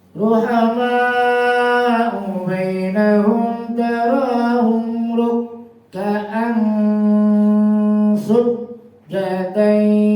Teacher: Rukka'an tanwin bertemu sin, ikhfa, samar bunyi tanwinnya.